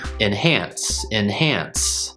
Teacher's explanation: enhance i'm almost going straight to that n sound and the the short i sound becomes more of a schwa sound